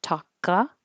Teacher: The K will connect to the A, talka, and then the T you won't hear. So I put that little mark there to remind you to hold your tongue in that position.